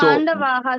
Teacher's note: as you take the time to pronounce aha, the a matra, the same amount of time will be added for the visarga. Ha.